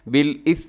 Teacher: बिल इस्मी में सा है और इसमें सीटी से बचिएगा